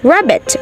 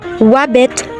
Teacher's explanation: substitute W for an R like rabbit to wabbit